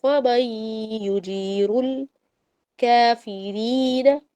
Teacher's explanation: فمن یہاں پر نون اور یا کے درمیان میں بھی ادغام ہو رہا ہے